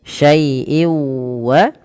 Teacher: Tanwin itu pada dasarnya adalah bunyi suara nun yang dilafatkan tapi tidak dituliskan. Nah, ketika ada syai'in bertemu dengan huruf waw, maka masukkan tanwinnya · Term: idgham